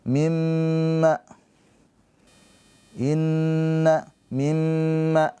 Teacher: ya sama mim tasdid, nun tasdid. Itu namanya ghunah musyaddadah ditahan dua harakat.